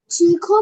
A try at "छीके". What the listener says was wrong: छीको नहीं है, छीके।